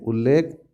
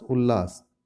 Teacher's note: यदि त वर्ग के पश्चात ल आए तो त का ल हो जाता है